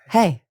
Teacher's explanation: I am using the lowest end of my natural tone.